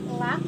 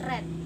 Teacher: L is a alveolar and R is a palatal.